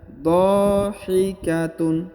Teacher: Perhatikan huruf dha dulu dipanjangkan 2 harokat karena di depannya terdapat alif ya.